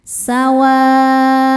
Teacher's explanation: Karena ada tanwin dammah bertemu huruf halqi atau tenggorokan halq itu ya yaitu ain. Maka cara bacanya tanwin ini dibaca sesuai bunyi asalnya jelas n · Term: izhar halqi